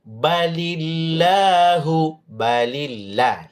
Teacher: la tipis karena sebelumnya baris ba baris bawah ya